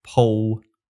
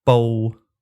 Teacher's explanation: spelled with a P, this one's basically identical to English's P. It has aspiration and everything.